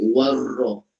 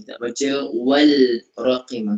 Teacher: Alif lam syamsiyah ni bunyi lam tu tak ada, terus masuk pada huruf selepasnya. Terus jadi warra.